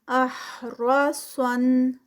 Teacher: صاد heavy را ہے، پیچھے را بھی ہیوی ہے اور آگے صاد بھی ہیوی ہے